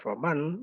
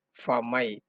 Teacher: Jadi nunnya dileburkan ke dalam huruf ya. Jadi bukannya harusnya faman, namun karena dia masuk kaidah, biguna maka dia menjadi famai.